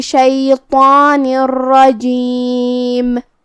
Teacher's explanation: کلمت شیطان میں یہاں حرف الطا کو ہمیں بھاری آواز میں ادا کرنا ہے، جو کہ اس کے اوپر کھڑا زبر ہے، تو یہاں مد الف ہوا، تو ہم طا کو اور مد الف کو دونوں کو بھاری آواز میں پڑھیں گے · کلمت بقول میں یہاں قاف کا دھیان رہے، ہمیں اسے تفخیم سے ادا کرنا ہے، مطلب بھاری آواز میں